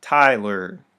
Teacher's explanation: stress on the first syllable unstress on the second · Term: trochaic